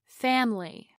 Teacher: Over time, the vowel I relaxes so much that we drop the whole syllable and turn it into family. We say some of these words so often that we skip over the less important unstressed vowels.